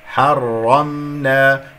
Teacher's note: ميم ساكنة يجري فيها صوت فترة زمنية بسيطة، لأنها من أحرف التوسط